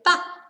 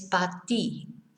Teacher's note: Okay, so número dos is a good example of how they don't finish off the words. Instead of para, they say pa.